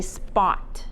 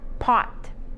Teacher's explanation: so you can spot pot so you're not feeling that that you shouldn't feel the puff come out